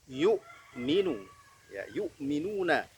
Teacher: Syiddah, tidak ada suara yang mengalir ketika mengucapkan bunyi hamzah.